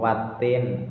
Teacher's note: Ada beberapa pembacaan di situ, yaitu wattin, alnya merupakan al syamsiyah karena al bertemu dengan huruf syamsiyah yaitu ta. Cara bacanya diidghamkan atau dimasukkan, atau dengan kata lain tulisannya tetap ada, cuma tidak dibaca alif lam tapi lebih ke ta